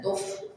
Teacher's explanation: ada nafas yang keluar. Kemudian ada sifat rohawa atau suaranya mengalir, suara mengalir. Tuf mengalir, suara dan nafas.